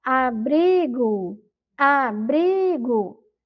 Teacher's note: A sílaba mais forte da palavra é bri.